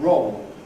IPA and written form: rɒʊɫ (roll)